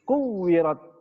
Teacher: Perhatikan di ujung huruf ta sukun ketika membaca wakaf ya, kuwirat itu bacanya cukup pakai hamas.